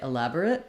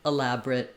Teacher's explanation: You either say elaborate with 4 syllables or elaborate with just 3.